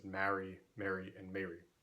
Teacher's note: probably most Americans and speakers in Britain did not have the same vowel in those three words